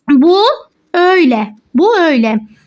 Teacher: şu u sesi aşınıyor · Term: aşınma